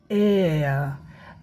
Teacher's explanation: It moves from ए to अ ए से अ की तरफ।